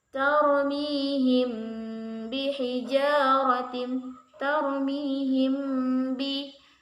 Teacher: Ikhfa syafawi itu apabila mim sukun bertemu huruf ba, dibaca samar disertai gunnah